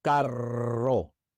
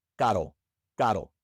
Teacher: With a double R, it means car. Carro. It's a rolled R.